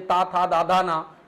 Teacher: अगला क्या कह रहा है कि ता था दाधा ना का उच्चारण स्थान क्या होता है, तो जब आप बोलोगे ता था दाधा ना, ठीक है, तो दांत पर जीभ आपकी टकराती है इसलिए इनका उच्चारण स्थान क्या होगा, दंत होता है